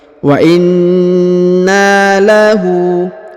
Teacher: Huruf hu dibaca panjang 2 harokat karena terdapat harokat u terbalik.